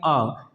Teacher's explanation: अ का उच्चारण स्थान भी कंठ है